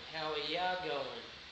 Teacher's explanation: The next one, that is also very, very common, is you equals ya.